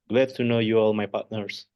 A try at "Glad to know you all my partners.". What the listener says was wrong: I love your accent. That's really good.